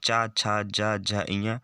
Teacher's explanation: वे व्यंजन जिनके उच्चारण में जीभ की पिछले भाग का तालु से स्पर्श हो ताल व्यंजन कहते हैं